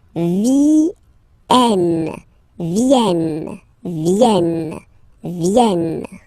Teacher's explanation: So remember here, it's quite interesting because we've got this E vowel here, and then we've got a double N after. Okay, and the rule in French is that when you get this E and a double vowel after, you will have to pronounce this E like eh